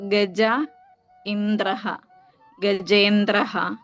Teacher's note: ഈ വായിലെ ആ ആയും ഇയും ചേർന്ന് അതിന്റെ രണ്ടിന്റെയും കൂടി സ്ഥാനത്ത് എ വരുകയാണ്.